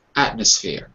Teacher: When you speak quickly, the M sounds more like an N. So M like mother changes to N like nurse.